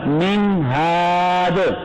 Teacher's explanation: मीम के नून में गुन्ना नहीं होगा, क्योंकि नून साकिन के बाद हर्फ हल्की हा आया हुआ है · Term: इज़हार हल्की